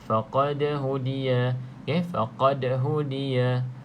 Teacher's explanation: Pastikan ada sedikit lantunan pada huruf da yang sukun, da mati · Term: qalqalah